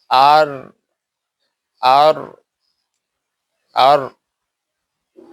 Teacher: জিহ্বার আগের অংশের পিঠ উপরে সানাউলিয়া নামক দুই দাঁতের মাড়ি